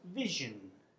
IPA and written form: vɪʃən (vision)